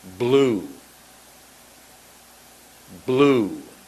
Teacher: Close your lips. Now the L is the tongue behind the top teeth and mouth almost closed. In this case, your mouth will be closed, and you'll make the B and the L at exactly the same time.